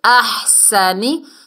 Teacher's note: ہا کو اچھے سے ادا کرنا ہے، حلق کے درمیان سے ایسی آواز آنی چاہیے